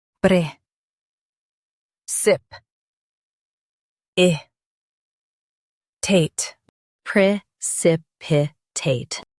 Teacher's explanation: In UK. Stress sip and soften I.